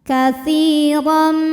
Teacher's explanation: Maka huruf ta panjang 2 harokat. Katsiran, huruf ra dibaca secara tafkhim karena berharokat fathah tanwin, maka ra dibaca dengan tebal